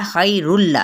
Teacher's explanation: इदगाम बिला गुन्ना, गुन्ने के बगैर अब हमने पढ़ना है ना, क्योंकि तनवीन पेश के बाद लाम आ रहा था